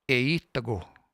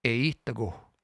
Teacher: you just hear that little puff of air at the end.